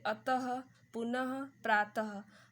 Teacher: तो अक्षर के अंत में लगने वाले 2 बिंदुओं को विसर्ग कहते हैं और इसका उच्चारण हल्के से ह शब्द के साथ होता है